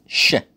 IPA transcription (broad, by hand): ʃ